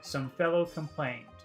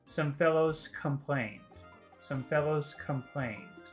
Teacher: if I said fellows, the next word is complained, and the S and the K sound would combine, and it would be some fellows complained, scomplained, scomplained.